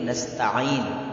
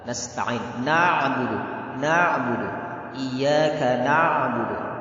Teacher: Jadi jangan dibaca in tapi nasta'in. Huruf ain itu keluar dari wasatul halqi. Kata Imam Jazari dari wasatul halqi, dari tengah tenggorokan. Itu harus benar kita membacanya dari tengah tenggorokan.